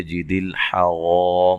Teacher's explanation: را کو موٹا ادا کرنا ہے اور الف مدہ ہے، وقف کی صورت میں میم ساکن ہو جائے گی اور مد کے ساتھ وقف کیا جا سکتا ہے۔